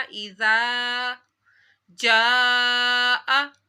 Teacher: زال کو نرمی سے پڑھا، زال کے آگے الف تھا تو الف مدہ کیا۔ اذا جاء، جیم کے اوپر بڑا مادہ ہے، اس کو 5 الف کے برابر کھینچنا ہے